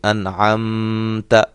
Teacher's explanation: میم ساکن یہاں بھی ہم غنہ نہیں کریں گے، انعمت غنہ نہیں کر کے پڑھیں گے۔